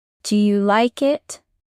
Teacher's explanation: Questions in English often rise at the end. For example, do you like it goes up at it. This rising sound shows you are curious.